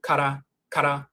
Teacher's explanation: And even if you say ka, K-A-R-A, ka-ra, and quickly kara, kara, the tongue is tapping the roof of the mouth once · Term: rolling R